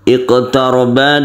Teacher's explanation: ada Q yang sukun ini kita pantulkan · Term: qqalah sugro